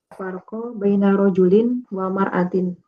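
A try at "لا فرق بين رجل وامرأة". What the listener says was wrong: Laisa mar'ah walakin imra'ah bil alif. Nah, bil alif laisa hamzah. Idzalika wa imra'atin. Kama tati fil ayah. Daraballahu masalan. Kafaru mura'ata Nuhin wa mura'ata Lut. Alif laisa hamzah wa mra ya. Laisa wa mar'ah la wa mra'ah.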